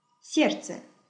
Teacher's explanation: We write S-E-R-D-C-E, but we use sounds S-E-R-C-E.